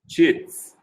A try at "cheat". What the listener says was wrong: Cheat. No S at the end, just cheat.